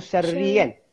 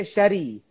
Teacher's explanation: Maksudnya syarri tu dia dah beratkan pada ra tu. Kalau dia tak ada sabdu, kita baca syari.